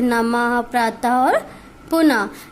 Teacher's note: वही है, विसर्ग का चिन्ह इस तरीके का होता है, शब्द के अंत में लगाए जाते हैं। विसर्ग का उच्चारण हा की तरह किया जाता है, जैसे नमः, प्रातः और पुनः। यानी बोलने में जो ध्वनि आ रही है लास्ट की, वो हा से रिलेटेड होती है, हा से जुड़ी हुई होती है।